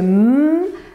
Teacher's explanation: Alors, comme pour les consonnes occlusives, l'air est momentanément bloqué dans le conduit vocal, mais l'air passe par le nez de façon continue. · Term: consonnes nasales